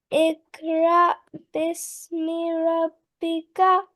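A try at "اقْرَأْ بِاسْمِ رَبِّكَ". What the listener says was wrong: Just make it more prominent. Kalkala here.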